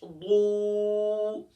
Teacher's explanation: اب یہاں جو یہ واو ہے، یہ واو مدہ ہے، اسے ایک الف کی مقدار کھینچیں گے